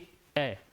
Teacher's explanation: आप प्रोनाउंस भी करेंगे तो सामने आपका काम पे आता है, सामने वाला भाग जीभ का काम पे आता है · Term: अग्र स्वर